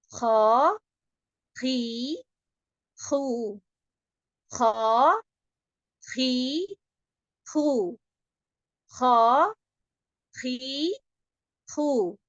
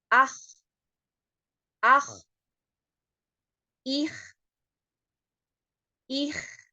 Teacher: tenggorokan bagian ujung ya areanya terletak pada akar lidah yang bertemu dengan langit-langit yang lembut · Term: ujung tenggorokan